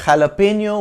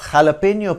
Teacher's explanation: J is pronounced like a throaty h